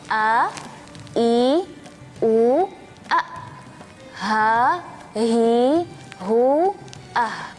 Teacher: huruf hamzah dan huruf ha dari makhraj tenggorokan bagian bawah